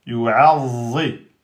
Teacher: On insiste sur la shidda et on emphatise la lettre za.